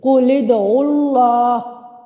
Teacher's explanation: تو اب ہم اس لام ساکن کو کسرہ دیں گے اور اس کو اگلے سکون اصلی کے ساتھ ملا کر پڑھیں گے